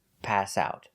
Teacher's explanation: passed out is a phrasal verb so we need to stress both the verb pass and the preposition out stress both words pass out not pass out but pass out